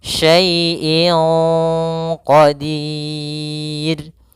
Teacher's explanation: Maka menyamarkannya langsung ke huruf qaf, bukan syai'in qa. Jangan pakai eng, tapi dia langsung disamarkan ke huruf qafnya. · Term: ikhfa